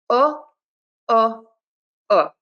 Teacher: my lips are slightly rounded. They are relaxed but slightly rounded. I am not puckering and being tense. I'm not saying ooh. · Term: short oo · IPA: /ʊ/